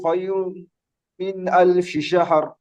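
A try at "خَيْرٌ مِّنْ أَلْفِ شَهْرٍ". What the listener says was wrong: এখানে আরেকটু গুণা করবেন, খয়রুম, একটু বেশি গুণা করবেন। জি, তাহলে পরিষ্কার বোঝা যাবে।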